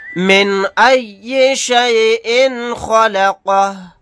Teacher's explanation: نون ساکن کے بعد حمزہ آ گیا، یہاں پر اظہار حلقی کا قاعدہ ہوگا، یہاں پر اظہار کر کے پڑھیں گے۔ یہاں پر حمزہ کے نیچے تنوین ہے، تنوین کے بعد خا آ گیا، خا اظہار حلقی کے 6 حروف میں سے ایک حرف ہے تو یہاں پر اظہار کر کے پڑھیں گے۔